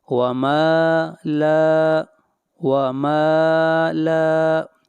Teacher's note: میم کو بھی کھینچ کر پڑھیں گے اور لام کو بھی، یہاں پر الف مدہ ہے